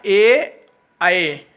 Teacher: स्वर में ए आए जो बोले जाते हैं वो कंठ और तालु से ही बोले जाते हैं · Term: कंठ तालु